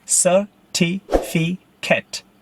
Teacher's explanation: With the stress on the second syllable.